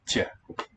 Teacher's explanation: It's a T with a soft sign, a palatalized T.